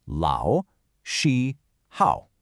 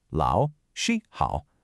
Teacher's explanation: So let's map out the tonal melody of Lao Shi Hao. Lao is a third tone, that's a dip and a rise. Shi is a high flat first tone, and Hao is another third tone. So the pattern sounds like this: Lao, Shi, Hao.